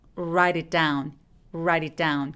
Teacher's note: write it down 그래서 write it 이렇게 첫 번째 write의 t가 굴러가는 소리를 내죠.